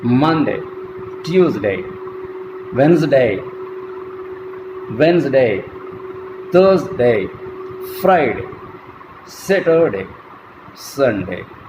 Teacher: So we utter this second syllable with greater breath force. But the same DAY from Monday to Sunday, it is unstressed.